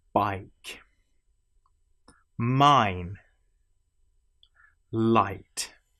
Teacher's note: This sound as you will notice changes. It starts as a and ends in E. I the whole shape of the mouth changes through this. · It starts as A and ends in E, I. The whole shape of the mouth changes through this, and so essentially you have what feels not like a straight vowel sound, but as a curved vowel sound.